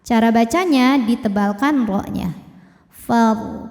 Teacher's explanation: Cara bacanya ditebalkan ro-nya. Far, pangkal lidah naik. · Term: tafkhim